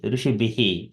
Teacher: So instead of R sound, we get a Visarga sound here, Rishibihi.